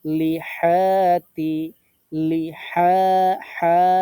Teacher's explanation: গলার মাঝখানে চেপে ধরে এক আলিফ টান